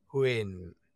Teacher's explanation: yao huyền, which is a falling tone. It goes down